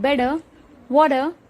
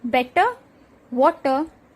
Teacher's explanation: My 7th tip for speaking fast English is specific to American English. It is to change a T sound to a D sound.